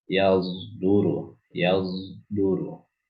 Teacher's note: Jadi ismam di sini maksudnya adalah mencampur suara shad dengan zai.